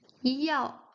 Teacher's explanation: Fourth tone going down